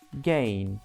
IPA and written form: geɪn (gain)